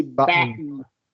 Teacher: Americans use the glottal T here